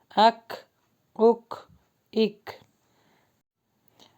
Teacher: آپ کی آواز بند ہو کر آپ کی سانس جو ہے وہ جاری ہو رہی ہے